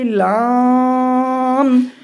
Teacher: জিহ্বার আগার কিনারা সামনে উপরের দাঁতের মাড়ির সঙ্গে লাগিয়ে উচ্চারিত হয়